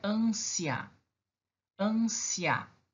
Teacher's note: O A é mais forte, tá? Então, eu tenho a semivogal I e mais a vogal A. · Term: crescente